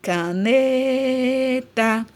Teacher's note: o né eu demorei mais falando então é a minha sílaba tônica · Na palavra caneta, a sílaba tônica, o ne, é a penúltima.